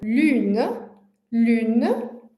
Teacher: Na verdade, é um som quase como se fosse um I, com a boca da do U mais arredondada ainda do que no U do português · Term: som U